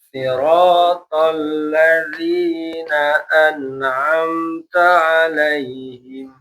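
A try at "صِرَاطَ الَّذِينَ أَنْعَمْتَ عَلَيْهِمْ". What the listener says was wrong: Bagus. Ya, an'amta, dua izhar ya.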